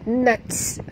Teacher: huruf ta bila dia mati ada hamas